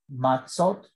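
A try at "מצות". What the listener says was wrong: Good. That's more than one matzah.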